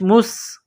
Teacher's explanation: اور غی، مستقر، میم کو سین کے ساتھ پلس کرنا ہے، سین میں سیٹی کی آواز پیدا کرنی ہے